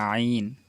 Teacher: আমরা যখন আইন বলবো গলার ভিতরে নেব, হ্যাঁ, কণ্ঠনালীর মাঝখান থেকে উচ্চারিত হয় আইন